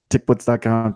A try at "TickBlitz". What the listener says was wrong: Sounds like you're saying tits blitz.